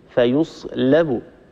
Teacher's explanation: الشيء الثاني فيصلب، انتبهي لللام، اللام لا نتركها تتأثر بجارتها الصاد المستعلية المطبقة، لا نقول فيصلب، لا قالون لا يقرأ هكذا، فيصلب، اللام مستفلة، فنحافظ على ترقيقها لأن الترقيق هو مستحق استعلاء الحرف.